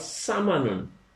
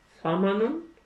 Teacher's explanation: سین میں سیٹی کی آواز لائیں گے تو وہ سامانن جو بنے گا اس کا مطلب گھی ہوگا، اور نرم رکھیں گے سامانن تو وہ قیمت ہوگا